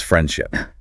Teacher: that D is often so lightly pronounced it's practically invisible. It becomes friendship.